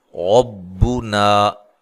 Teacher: را کو موٹا ادا کرنا ہے، را کے اوپر زبر و را کو موٹا ادا کیا جاتا ہے۔